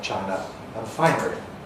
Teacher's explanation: they don't rhyme for people who retain historical R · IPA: /ˈʧaɪnə/